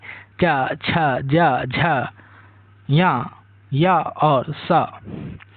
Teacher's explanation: तालव्य व्यंजन जो है यह इनका उच्चारण स्थान तालु से होता है, यानी मुख के भीतर की ऊपरी छत के पिछले मुलायम भाग को जो है तालु कहा जाता है। जिन व्यंजनों का उच्चारण करते समय जीभ का मध्य भाग तालु को छूता है उन्हें तालव्य व्यंजन कहते हैं